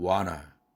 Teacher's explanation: 은이 겹치니까 중복자음 탈락 현상이 일어난 겁니다. 그래서 완나라고 하지 않고 와나 이렇게 발음하는 것이죠.